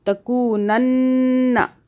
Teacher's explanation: خالی کاف نہیں ہے، آگے واو بھی ہے، یہ مدہ ہو رہی ہے واو